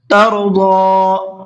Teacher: ضاد کو کھینچ کر کے بھی پڑھنا ہے، اس لیے کہ اس کے اوپر کھڑا زبر ہے، اور ساتھ ساتھ اس کو پر بھی کر کے پڑھنا ہے